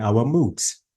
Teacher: So my intonation should be down, and I have to use falling intonation